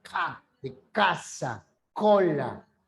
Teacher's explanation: la lengua retrocede y choca con el velo del paladar el sonido se llama velar